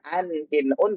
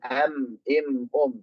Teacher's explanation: Mengubah mengubah nun sukun menjadi mim. Jadi kalau pengin jadi m itu kan harus mingkem kan harus mim yang tadinya an in un jadi am im um gitu. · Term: iqlab